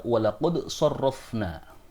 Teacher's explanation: Huruf dal di sini harus dibaca dengan izhar, atau dengan jelas, dalam pengucapan qad, dan qalqalah dari huruf dal tidak boleh dihilangkan